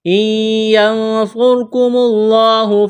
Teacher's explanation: إن ينصركم الله فلا غالب لكم، نون ساکن کے بعد یا ہے تو یہاں پر ادغام کریں گے، غنہ کریں گے، اس نون کو نہیں پڑھیں گے